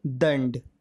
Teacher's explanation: यहाँ पर जो अनुस्वर है उसका उच्चारण न के नीचे हलंत के रूप में होगा